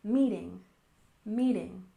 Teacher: And next we have meeting. Stress the first syllable, meeting, meeting.